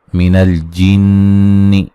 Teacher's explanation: नून मुशद्दद पे गुन्ना ज़रूरी है